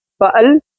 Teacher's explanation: हमज़ा के ऊपर ज़बर है, लाम के ऊपर जज़म है, इसलिए लाम को हम हमज़ा से मिलाएंगे। हमज़ा लाम ज़बर अल, फ़अल।